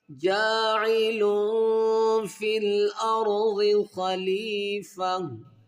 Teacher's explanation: यहाँ पर इख्फा माल गुन्ना है क्योंकि दो पेश की तनवीन के आगे रूफ इख्फा में फा है